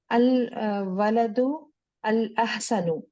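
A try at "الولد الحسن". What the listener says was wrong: हम्म, अल वलदुल हसन जोड़ते हैं ना, अलिफ लाम जब आता है ना तो उसको जोड़ते हैं, पढ़ने का तरीका होता है अल वलदुल हसन।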